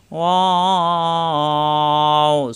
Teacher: ঠোট গোল হবে দুই ঠোট মিলবে না